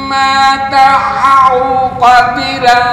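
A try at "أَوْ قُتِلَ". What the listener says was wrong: Ku bukan ko. Qutilan.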